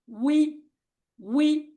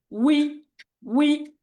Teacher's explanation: ঠোঁট গোল করে তারপরে উই ছড়িয়ে দিতে হবে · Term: ওয়াও কাসরা